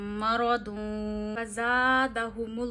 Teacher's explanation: दो पेश की आवाज नाक में ले जाके एक उंगली जितनी ठहरानी है। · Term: इफा